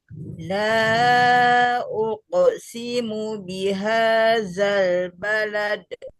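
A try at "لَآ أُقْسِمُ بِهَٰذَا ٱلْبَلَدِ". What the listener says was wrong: Ya, pantulannya jangan kecil, jelaskan aja. Balad, jangan gitu. Balad. Latnya panjang, panjang sedikit.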